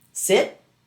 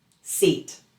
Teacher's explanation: The difference is a relaxed, flat vowel versus a tense, longer, melodic vowel.